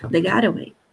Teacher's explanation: percebam que esse T final acaba ficando quase um R.